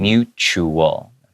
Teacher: The T is kind of pronounced like a CH sound